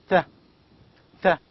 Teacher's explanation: The tip of the tongue touches the front upper teeth.